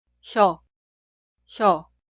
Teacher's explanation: Ya que la vocal contiene el sonido I, la consonante inicial 시옷 suena mucho más débil, como si fuera SH.